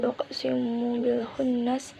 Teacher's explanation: terdapat qalqalah sughra karena terdapat huruf qalqalah yang matinya asli, huruf qaf. Cara membacanya ialah dengan dipantulkan.